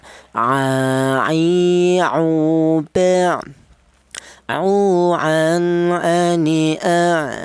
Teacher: Huruf ain ini keluarnya huruf berasal di tengah tenggorokan